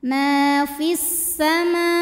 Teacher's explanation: Kemudian ada hukum alif lam yang dinamakan dengan alif lam syamsiyah. Karena alif lam menghadapi huruf syamsiyah yaitu sin, maka alif lam tidak perlu dibaca atau disebut dengan idgham syamsi.